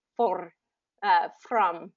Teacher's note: what I'm hearing is a rolled R, for, from, where the tongue is coming up and tapping the roof of the mouth. And so you're about half of the time you have that smoothed out R, and half the time you're kind of rolling the R.